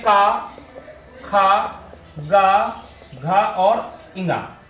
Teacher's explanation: का वर्ग का उच्चारण अगर पूछा जाए तो आपका कंठ है और इसमें जो वर्ण होते हैं का, खा, गा, घा और इंगा, ये।